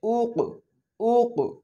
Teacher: হামজা, কফ, পেশ, উক, উক। এই হালকা ধাক্কা লাগতেছে, এইটাই হচ্ছে মাখরাজে ধাক্কা দিয়ে পড়া